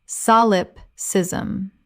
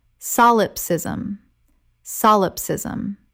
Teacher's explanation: Correct pronunciation, solipsism. Four syllables with the stress on the first. It means the view that only the self exists. · 4 syllables with the stress on the first.